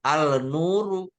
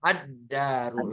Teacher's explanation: addaru lamnya enggak dibaca Iya jadi itu namanya huruf Syamsiyah artinya huruf yang harus memasukkan lam sukunnya dalam huruf itu lamnya enggak dibaca